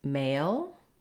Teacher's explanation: I prefer to call it the A diphthong because it's made up of two sounds gliding between two vowel positions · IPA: /eɪ/